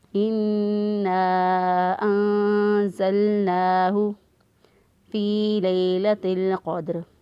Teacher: ہا جو ہے اس کو اقصی حلق سے یعنی گلے کا وہ حصہ جو سینے کی طرف ہوتا ہے وہاں سے ادا کرنا ہے